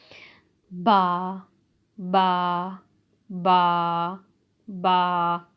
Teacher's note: बा जो होता है वो दोनों होंठों के तर हिस्से से अदा होता है। बा बा बा बा।